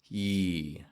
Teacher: projecting your voice clearly in the pure vowel part ah and fading in the Y Glide